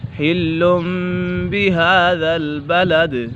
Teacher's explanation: حِلٌّ یہاں پر اقلاب کا قاعدہ لگ رہا ہے کیونکہ نون ساکن یا تنوین کے بعد حرف با آ جائے تو اقلاب ہوگا، یعنی نون ساکن اور تنوین کو میم سے بدل کر اخفاء کریں گے، یعنی غنہ کر کے پڑھیں گے